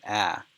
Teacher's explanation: this is not a diphthong. It's actually the sound ah